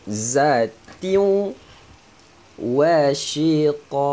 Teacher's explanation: tanwin masukkan ke dalam huruf waw dan dengung